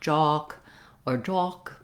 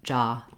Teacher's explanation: The ah vowel is open and unrounded. So in American English, you want to make sure that you don't have any rounding, not jock or jock, but jock. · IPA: /ɑ/